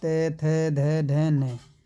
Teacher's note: उच्चारण की दृष्टि से जो मतलब कि ये दांत से बोले जाएंगे।